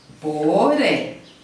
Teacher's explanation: ela é oxítona, porque a sílaba tônica é a última